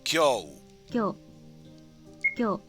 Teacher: instead of ki, yo, u, you fuse the yo with the ki. So instead of ki, yo, it's kyo.